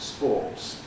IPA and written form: spɔːts (sports)